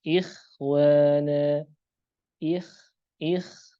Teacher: Pengucapannya tidak setebal sad, dad, ta dan dha. Karena sekali lagi dia tafkhimnya nisbi. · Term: tafkhim nisbi